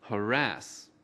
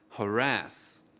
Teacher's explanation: Từ harass có hai âm tiết. Trọng âm của từ harass ở âm tiết thứ hai.